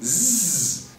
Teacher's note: Nos dois casos, você vai colocar a sua língua contra o seu dente de cima e deixar escapar uma frestinha de ar, tanto em quanto em z, com a diferença de que no som z suas cordas vocais estão vibrando. Suas cordas vocais vibram e isso faz toda a diferença. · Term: sonoro